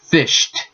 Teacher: Going with no vibration, fish sh has no vibration, but d does. So it sounds like fished, because T has no vibration.